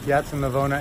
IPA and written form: ˈpjattsa naˈvoːna (Piazza Navona)